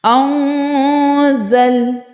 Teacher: ناک میں آواز لے جا کر تو پڑھیں گے، لیکن وہ آواز چھپا کر پڑھیں گے۔ ناک میں آواز لے جا کر چھپا کر غنہ کرنا، اس کو ہم بولتے ہیں اخفا